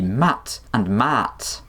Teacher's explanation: And suddenly the contrast between these words isn't in the final consonant anymore, but in the vowel length